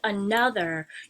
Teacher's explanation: you say the word another with stress on the second syllable we don't say another the stress is not on the first